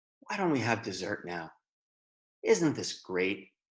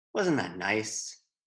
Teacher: the speaker's voice will be slightly more gentle, slightly go down a bit.